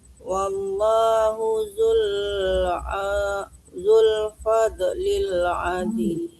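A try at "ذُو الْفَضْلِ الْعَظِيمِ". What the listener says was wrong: Masih mantul, jangan fad, jangan dilepas Bu gitu ya. Wallahu zul fadlil adzim. Ditahan, jangan dilepas. Kalau dilepas mantul ya.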